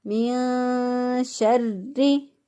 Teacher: نون ساکن کی آواز کو اخفا کرتے ہوئے، پوشیدہ کرتے ہوئے ہم ادا کریں گے